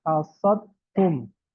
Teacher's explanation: Ya, hasad tum. Maka dal ya itu masuk ke ta idgham ya. Hasad tum. Dan dal ini sama ta makhrajnya sama ya punggung ujung lidah menempel pada pangkal dua gigi seri atas tetapi sifatnya ada yang berbeda ya.